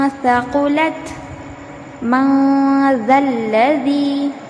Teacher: वक्त हमारी जो जबान है य मस को ना लगाए बल्कि जबान को दरमियान में रखकर नून की आवाज को नाक में छुपाए